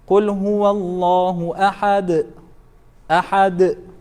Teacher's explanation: Harf mawquf always becomes sakina, regardless of the vowel that comes on top or on the bottom. So, and since dal now, it's sakina, and it is one of the 5 letters of qalqalah, you have to apply that echo sound to it.